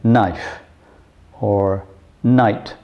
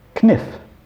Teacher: Knife would at one time have been pronounced kniff. Now, kn, the kn sound we don't like anymore, and so we've dropped it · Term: silent letters